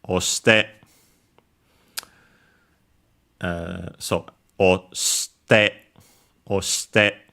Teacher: Since it's a U-verb, Godan verb, to get the te form, luckily it's easier than other Godan verbs, we simply change the su into si, and then add, of course, te, oste, of course, because of the usual rule, I-U between unvoiced consonant becomes barely heard, if at all